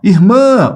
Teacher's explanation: onde é que se prolonga? Na última sílaba. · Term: oxítona